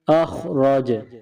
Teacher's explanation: یہاں جیم ہے، جیم کو جب ساکن کریں گے تو پھر قلقلہ کیا جائے گا، کیونکہ جیم حروف قلقلہ میں سے ہے، یعنی جیم کو کچھ ہلا کر پڑھیں گے